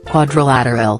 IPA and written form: ˌkwɒdrəˈlætərəl (Quadrilateral)